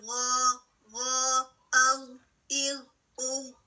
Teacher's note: غین جو ہے heavy letter ہے، اور اس کی ہیوی ہونے کی وجہ کیا ہے کہ ہماری زبان پیچھے سے اس کا ڈیپ حصہ اوپر کو اٹھتا ہے · یہ سافٹ پیلٹ سے بالکل نہیں ٹکراتا, درمیان میں گیپ رہتا ہے جہاں سے آواز خارج ہوتی ہے. سیکنڈ کیا ہے کہ آواز کے اوپر اٹھنے کی وجہ سے ہمارے منہ میں ایک زبان کے پیچھے سے اوپر اٹھنے کی وجہ سے ایک ڈوم سا بن جاتا ہے.